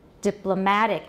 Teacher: all the stress is on the penultimate syllable